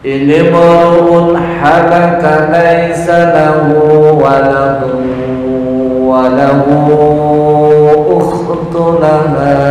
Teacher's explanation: kepanjangan lahu hanya 2 harokat